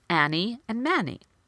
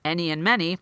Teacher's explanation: using the vowel ah instead of the vowel eh